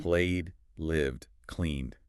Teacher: If the verb ends in a voiced sound, like a vowel, or LV ed, Your throat is buzzing. the ed sounds like D.